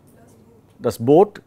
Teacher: It's between U and O. It's not exactly U.